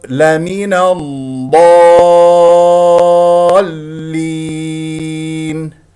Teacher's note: نقف على مد العرض السكون بمقدار حركتين وست حركات · المد اللازم المثقل كلمه ست حركات